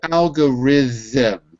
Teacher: The TH is voiced, not voiceless.